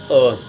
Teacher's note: मध्य स्वर की बात करें तो मध्य स्वर आपका एक है, कौन सा, अ। बोलकर देखिए, एक बीच से आवाज़ आ रही है